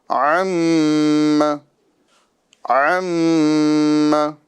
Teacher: मीम मुशद्द है और इस पर हमें एक अलिफ का गुना करना है